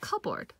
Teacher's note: so this P sound goes away here